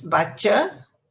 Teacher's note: Now, C has a CH sound in many of the words. That's a cha sound rather than a ka sound. So here it's baca with a CHA sound.